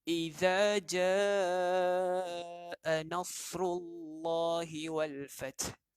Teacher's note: Bunyi sad mesti pekat. Ataupun dalam kaedah haraki S titik bawah. S titik bawah bermaksud S tebal. Jadi bunyi sad tu perlu kuat.